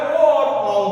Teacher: ओ और औ का उच्चारण स्थान है बच्चों कंठ और ओष्ठ दोनों। इसलिए इन दोनों वर्णों को हम लोग कंठोष् वर्ण कहते हैं। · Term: कंठोस्थय वर्ण